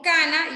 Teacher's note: La N, que es nasal alveolar sonora